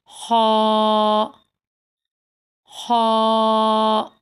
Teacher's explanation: مخرج ہیں اس کے حلق کا شروع حصہ، حلق کا یعنی کہ گلے کا شروع حصہ۔ تو پڑھتے ہیں، منہ کو چوڑا نہیں کریں گے، آرام سکون سے پڑھنا ہے۔